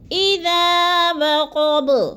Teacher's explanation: تھوڑا سا لمبا کر جانا ہے، الف مدہ ہے، اور وقب، با کو وقف کی صورت میں ساکن کر کے پڑھیں گے اور تھوڑا سا ہلائیں گے، قلقلہ ہوگا · اذا کو تھوڑا سا لمبا کر جانا ہے، الف مدہ ہے ، اور وقب، با کو وقف کی صورت میں ساکن کر